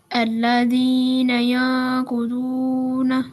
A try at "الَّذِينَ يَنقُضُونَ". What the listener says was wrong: Please tell me, is it thick voice letter or thin voice letter? So please read with thick voice, like الذين ينقضون